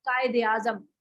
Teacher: जब आप उर्दू वाला ज़ेर पढ़ते हैं तो उसमें आपका जॉ लाइन नीचे नहीं जाता